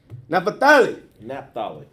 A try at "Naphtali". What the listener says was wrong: You said Napa. It's Naphtali.